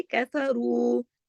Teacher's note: رو کے ساتھ واو مدہ ہے، 2 حرکات کھینچے گا